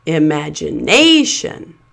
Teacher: So the second syllable, madge, is pronounced as a secondary stress syllable. It's not quite as loud and long as the primary stress syllable, but it still has that clear vowel sound, and it still stands out more than the weak syllables around it.